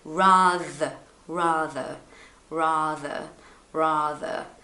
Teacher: so it's like a like a vibration th sound okay you have to feel a slight vibration